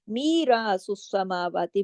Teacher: یا مدہ بھی الف مدہ بھی دونوں دو دو حرکات